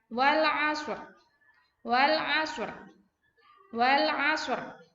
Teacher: ketika mengucapkan huruf SH kalian harus seperti mengeluarkan bunyi ketika Kalian mau bersiul